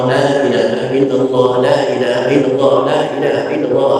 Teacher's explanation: Tetap lamnya dipanjangkan daripada huruf yang lain.